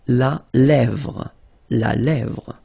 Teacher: Remember, accent grave here. E, really open.